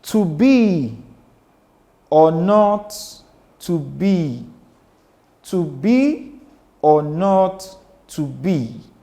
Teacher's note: That tells you that this or is lower and this not is higher. So this or is unstressed, while this not is stressed. It required energy for me to articulate, for me to say.